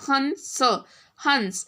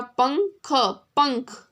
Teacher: तो जो वॉइस है वो कहाँ से आ रही है? नोज से आ रही है वॉइस, और इसके ऊपर डॉट भी है. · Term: अंग की मात्रा